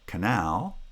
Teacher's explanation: today where the the the monosyllabic foot has a pre-foot syllable the pre-foot syllable is not in a foot so it does not have stress and it must be unstressed and will always have vowel reduction resulting in a schwa pronunciation